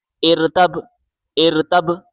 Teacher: حمزہ کو را کے ساتھ ملائیں، را باریک پڑھا جائے گا. را سے پہلے اگر زیر آ جائے تو را باریک پڑھا جاتا ہے